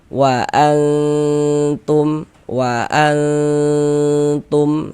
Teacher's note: suaranya itu kita tahan, kita panjangkan sejenak, kita dengungkan, kita gunahkan. E kira-kira sepanjang dua harakat. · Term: didengungkan